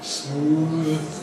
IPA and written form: smuːð (smooth)